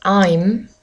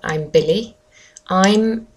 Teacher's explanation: do make sure when you say I'm for example I'm Billy I'm that you close your lips and that it doesn't come out as like I'm bil I'm